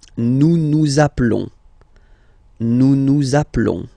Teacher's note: final s doesn't exist. Nous appelons.